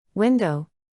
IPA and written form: ˈwɪn.doʊ (Window)